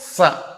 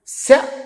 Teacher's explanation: సకారం దంత్యం శకారం తాలవ్యం రెండిటికి ఎంత తేడా ఉంది